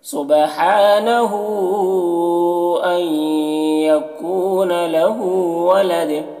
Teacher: वलद यहाँ पर मीम वक्फ लाजिम की अलामत है, यहाँ पर ठहरना ज़रूरी है और ठहरेंगे तो फिर दाल में कलकला होगा